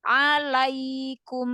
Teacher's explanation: Jadi harfulin itu lebih dari satu harokat tetapi tidak sampai 2 harokat. Jadi 1,5. Tadi kita Alaikum.